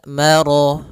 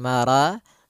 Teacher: sempurna fabiayyi albikuma tukadziban kemudian marjal bah yaltaqi pada lafal Mar rnya tebal disebabkan dia Ro yang berharakat Fathah